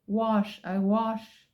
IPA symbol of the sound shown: wɒʃ